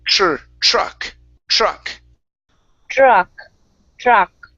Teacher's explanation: this is a trick with the tr sound okay so um with the tr you want to pronounce that as a chr